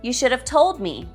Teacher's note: both should and have are weak here